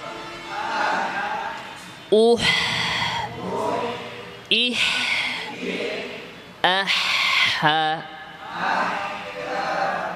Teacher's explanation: হা এর ক্ষেত্রে লিসানুল মিজমার এবং এই পিছনের অংশে মাঝখানে অনেক জায়গা ফাঁকা থাকে, যার ফলে এখানে বেশি আওয়াজ জারি এবং বাতাস জারি